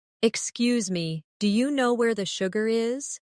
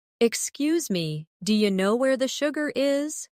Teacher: Notice how do you changes to dia?